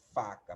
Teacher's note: você bota a parte de cima do dente no lábio de baixo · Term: letra F